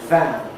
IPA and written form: væn (van)